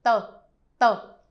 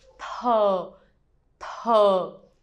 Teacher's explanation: with the T in Vietnamese, it's an inexplosive sound, which means you do not try to breathe out when you say this one. Try to cut off the wind.